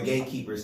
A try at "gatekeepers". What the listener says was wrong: You got to hit that T harder. It sounds like you said gatekeeper. Gates. Yeah, that T is very important in that question.